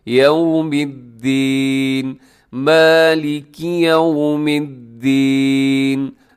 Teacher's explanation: اب یو کو خیال کیجیے گا کہ یہاں آپ کے ہونٹ گول ہو جائے